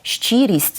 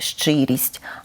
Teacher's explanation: недоречне пом'якшення шиплячих звуків там де вони повинні бути твердими